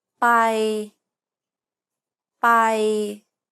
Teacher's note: after j the second tone is a mid tone by bye it's pronounced in the neutral comfortable part of your vocal range and is steady throughout · the key here is to maintain the same pitch from start to finish do not vary the pitch keep it even across the entire